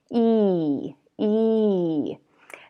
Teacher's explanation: If you try to imagine what's happening inside your mouth, you're going to feel that your tongue is behind your teeth, coming to the front, and it's also going to be very high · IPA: /iy/